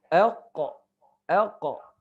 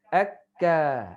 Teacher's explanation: Jadi kita sebut qaf tu tempat dia anak lidah.